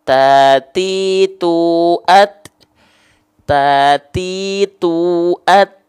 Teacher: Jadi si ujung lidahnya itu nempel ke pangkal gigi seri atas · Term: huruf ta